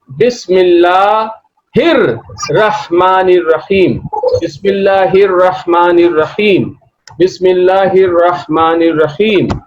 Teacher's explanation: Lam is not pronounced because Lam is followed by a sun letter, Ra. · Lam is not pronounced here because Lam is followed by a sun letter. And Hamza is not pronounced because Hamza is preceded by another word